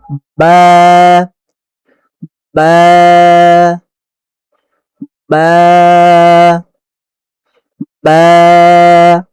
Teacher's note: দুই ঠোঁটের ভিজা জায়গা হতে বা উচ্চারিত হয়